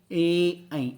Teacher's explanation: कंठ और तालु दोनों वर्क करेंगे, मतलब कंठ से झटका लगेगा और जीभ आपकी तालु से टच होगी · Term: कंठ तालव्य ध्वनियाँ